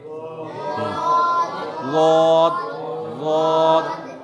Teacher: जुबान की करवट को ऊपर के दाढ़ों से मिलाकर ज़ाद अदा होता है। अब इसमें एक चीज़ और याद रखिए, बाएं जानिब से टच कीजिए, मिलाइए, चाहे दाएं जानिब से मिलाइए, दोनों तरफ से अदा होता, लेकिन बाएं जानिब से ज़्यादा आसानी होती है।